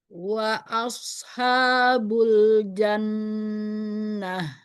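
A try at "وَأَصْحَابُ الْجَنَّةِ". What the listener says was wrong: Cuman huruf sodnya coba pangkal lidahnya saja yang dinaikkan. Jangan dimonyongkan bibirnya. Karena shad tidak ada berkaitan dengan bibir ya. Dia di alisan. Jadi pangkal lidahnya saja yang dinaikkan di belakang. Wa ashabul jannah. Tinggal huruf shad ya. Jadi kemudian ringan aja bacanya.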